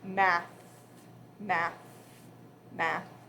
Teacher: you don't feel your vocal cords moving, okay? So that's not voiced